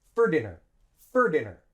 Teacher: we link for dinner for onto dinner we say it like one word